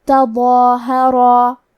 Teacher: مد الف اپنے پیچھے والے حرف کا حکم لیتا ہے تفخیم میں اور ترقیق میں، لہذا ہمیں مد الف کو بھی بھاری آواز میں ادا کرنا ہے. آخری میں را پہ زبر ہے، یہاں را کا حکم ہے تفخیم، تو ہم حرف را کو موٹی آواز میں پڑھیں گے. کیونکہ اس کے بعد مد الف ہے تو ہمیں مد الف کو تفخیم سے ادا کرنا ہے.